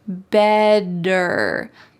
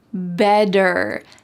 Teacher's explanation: In American English, a T that is surrounded by vowels or vowel sounds will change to a D,